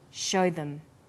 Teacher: them is unstressed also uses the words show them here show is stressed and them is unstressed so we say show them this is vowel and consonant linking